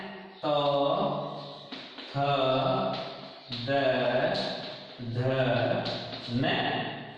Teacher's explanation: जब जीवा दांतों को स्पर्श करती है तब इनका उच्चारण होता है, इसलिए इनका उच्चारण स्थान जो है वो दंता हो गया। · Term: दंते वर्ण